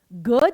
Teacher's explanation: ग जैसे बोला तो कान में आवाज गूंजी उसे कहते हैं सघोष ध्वनि